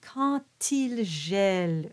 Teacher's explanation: we spoke about the D at the end of the word quand, and it becomes a T